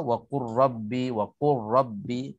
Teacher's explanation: terus kita masuk lam, kita masuk ke dalam ra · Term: idgham mutaqaribain